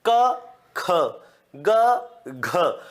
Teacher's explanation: पहला तीसरा पांचवा जब बोलते हो तो इसमें मुख से वायु कम निकलती है लेकिन जैसे आप दूसरा और चौथा वर्ण बोलते हो तो मुख की जो वायु है वो ज्यादा निकलती है और हाथ पर टकराती है बोल के देखो बड़े आराम से